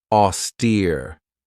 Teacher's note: This has 2 syllables, and the stress is on that second syllable with that long E sound